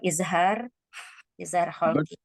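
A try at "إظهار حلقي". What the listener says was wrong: Halqi bukan kholqi. Huruf kho itu keluar dari tenggorokan. Izhar halqi terus.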